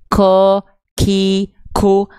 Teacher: kalau teman-teman melafalkan huruf qaf masih ada becek-becek nafasnya, ko, ki, ku, maka itu huruf kaf.